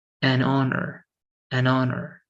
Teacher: so both are starting with h but this H is unpronounced